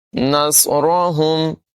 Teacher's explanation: صاد کی ادائیگی پر ہوگی، را کو بھی پر پڑھیں گے